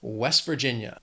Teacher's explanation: This state has 4 syllables, but again, the stress in that second word, that Virginia, is on that second syllable, West Virginia. If you say it quickly, you really almost don't hear that T at the end.